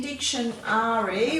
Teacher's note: In dictionary, we should say ari, but we don't. We give it a schwa sound.